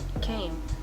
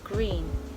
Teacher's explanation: Velar sounds are produced at the velum or soft palate